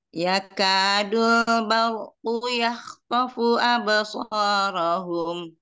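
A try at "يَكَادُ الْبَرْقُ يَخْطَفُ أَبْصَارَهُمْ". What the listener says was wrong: Huruf kapnya kita tambah sedikit hamasnya Umi. Ya ka, ka, ya kadul.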